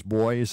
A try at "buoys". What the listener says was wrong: you're pronouncing it boes I I've always heard buoys